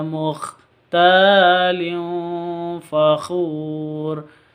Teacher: tanwin bertemu dengan fa, samar didengungkan, ikhfa hakiki